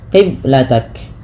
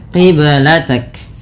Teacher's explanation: Qiblatak ada bacaan qalqalah pada lafal huruf ba yang disukunkan. Ba sukun merupakan salah satu bacaan qalqalah yang dimana harus memantul. Kesalahan yang terjadi dalam membaca qalqalah yaitu tidak memantulkannya, qiblatak.